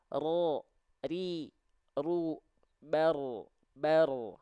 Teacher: huruf ro itu dia getarannya sedikit ya sedikit tapi tetap tegas lugas dan jelas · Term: takrir